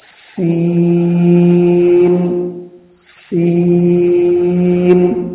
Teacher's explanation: سین بھی سیٹی کے ساتھ، اور سین میں بھی آواز بالکل پست ہونی چاہیے، معروف ادا ہو، مجہول نہ ہو جائے.